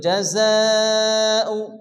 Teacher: যা এই মাদের পরে হামজা এসে মধ্যে মুত্তাসিল চার আলিফ টেনে পড়তে হবে।